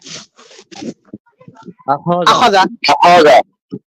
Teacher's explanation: খ জবর খ তে কোন টান নেই